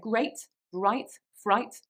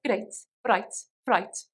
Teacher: another thing about this accent is that there is a tapped R